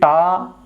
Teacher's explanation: तो इनमें से अगर टा वर्ण अगर हम देखें तो ये मूर्धन्य है, क्योंकि टा जब हम बोलेंगे तो उसमें हमारी जिह्वा जो होगी वो दंत को स्पर्श नहीं करेगी बल्कि मूर्धा को स्पर्श करेगी